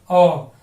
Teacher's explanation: इसका उच्चारण ओ, ऐसे मुंह जो है गोल से राउंड करके ओ